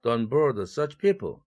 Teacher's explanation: such가 꾸며주는 such people에 이럴 때에는 제대로 특정인이기 때문에 people이 일강세를 가져간 것입니다.